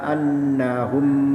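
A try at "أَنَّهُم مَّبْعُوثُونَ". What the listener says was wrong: Annya kurang dengung Bapak. Ulaika annahum ya. Humnya dengung. Annahum mab'utsun ya. Kurang dengung sedikit. Annahum ngaten. A-nya ya, A-nya mulai tadi kurang pas sebenarnya ya. Kurang masuk ke tengah ya.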